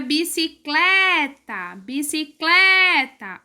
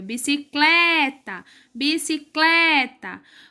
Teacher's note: penúltima sílaba é mais forte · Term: paroxítona